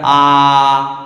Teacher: তো জিভের অবস্থান একেবারে মুখের নিচে থাকে, তাই এইটাকে বলবো আমরা নিম্ন স্বরধ্বনি। নিম্ন, নিম্ন আ আ।